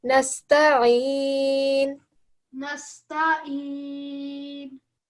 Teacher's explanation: Ta is a thin letter, and therefore when we try and say it, we give it sort of like a smiley face when we're saying it. So nasta'in.